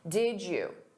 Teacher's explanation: Native speakers will combine did you and say did you. Did you. So you hear a j sound. Did you. Or we can reduce that to did ya or did ya.